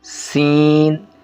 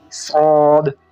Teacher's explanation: سین کو جو ہے سیٹی کے ساتھ باریک پڑھنا ہے، جبکہ صاد کو سیٹی کے ساتھ موٹا پڑھنا ہے، اور موٹا کرنے کے لیے ہونٹوں کو گول نہیں کرنا بلکہ زبان کو پیچھے تالو کی طرف کھینچیں گے، اس سے گول ہوگا۔